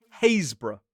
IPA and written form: ˈheɪzb(ə)rə (Happisburgh)